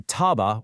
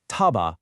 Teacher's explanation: taba with a normal falling tone means to hear, but say it as taba with a level tone, and suddenly it means to reduce or fall.